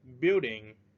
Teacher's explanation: We stress at the first syllable.